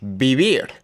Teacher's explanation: B and V make almost the same sound.